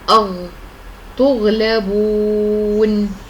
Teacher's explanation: حرف الغين به صفتان قويتان وهما الجهر والاستعلاء، وصفتان ضعيفتان وهما الرخاوة والاستفال.